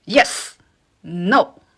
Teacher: You can hear that the pronunciation or the tone dropped very quickly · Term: fourth tone